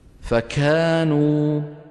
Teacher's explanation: المبالغة في همسها الكاف يعني وهي متحركة